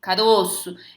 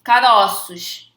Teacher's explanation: O ozinho tá fechado. Caroço. E quando a gente fala no plural, caroços, tá? Então o timbre fica aberto. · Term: plural metafônico